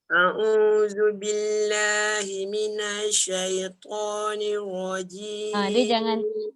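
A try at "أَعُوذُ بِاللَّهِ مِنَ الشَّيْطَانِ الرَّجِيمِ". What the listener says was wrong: Dia jangan minasyai, jangan lambat. Minasyai.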